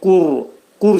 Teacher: Vəl burda qur dedikdə qaf hərfinin məxrəci dediyimiz kimi qaf hərfinin məxrəci dilin sonu və dilçəyin başlanğıcındadır